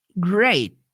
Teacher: ela não enfatiza o t no final da palavra isso é comum extremamente comum muitas vezes você vai perceber que